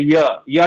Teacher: य य जब बोलते है तो तालू और कंठ ये साथ में होता है